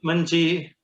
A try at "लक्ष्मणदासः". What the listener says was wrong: In Sanskrit no ji. Lakshman Dasah.